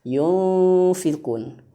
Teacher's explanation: Samarnya itu harus persiapan ke huruf sesudahnya, yaitu huruf fa. Yunfiqun. Huruf fa itu di mana makhrajnya? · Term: ikhfa